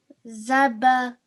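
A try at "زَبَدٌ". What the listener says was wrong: This is the letter dal. That's why it's going to be pronounced as dun. Zabadun.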